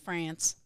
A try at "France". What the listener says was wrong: Without the twang.